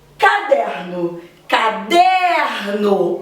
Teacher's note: O der é a sílaba mais forte e ela se localiza nessa posição, penúltima. Por isso, paroxítona.